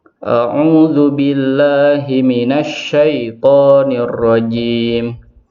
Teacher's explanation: sifat tafashi, menyebarnya angin di mulut, dimiliki oleh huruf shin.